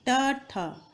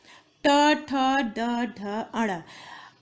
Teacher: जीभ का अगला हिस्सा मुड़ के ऊपर जाता है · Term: मूर्धन्य